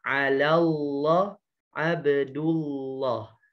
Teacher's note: Abdullah ujung lidahnya diletakkan di gusi ya karena dia memiliki sifat inhiraf